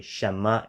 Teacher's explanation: without the N of Shen being distinctly realized